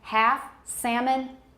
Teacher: half and salmon they never have an l that's produced